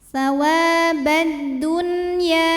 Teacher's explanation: Kemudian ada hukum alif lam yang dinamakan dengan alif lam syamsiyah. Karena alif lam menghadapi huruf syamsiyah yaitu dal, maka alif lam ini tidak dibaca atau biasa disebut dengan idgham syamsi.